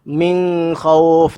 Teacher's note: Min pastikan kita baca secara jelas. Min jangan dengung.